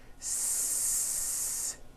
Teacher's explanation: The S consonant, made with air going through your front teeth.